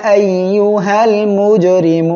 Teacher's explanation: এখানে জিম সাকিন অবস্থায় আছে, ধাক্কা দিয়ে পড়তে হবে